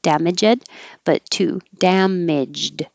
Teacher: the G here sounds like a D, but it's 2 syllables, not 3.